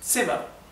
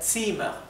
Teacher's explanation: como sem indica que la vocal anterior se pronuncia bien corta como verán la i es bien cortita